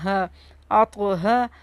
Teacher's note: ہا کو سینے سے نکالنا ہے